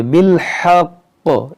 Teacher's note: تشدید کو باقی رکھیں گے, زیر کو ساکن کر دیں گے, بالحق اس طرح پڑھیں گے.